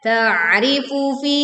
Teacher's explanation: Tekan ain sukun dengan menyempitkan pita suaranya sehingga suara terdengar lebih berat.